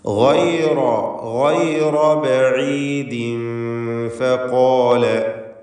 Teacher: ഗൈന് റാ രണ്ടിനും തഫ്ഖീം നൽകി തടിപ്പിച്ച് ഉച്ചരിക്കുക.